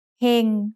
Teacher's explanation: เ ฮ ง has a low-class consonant with a live syllable ending, so it's mid-tone.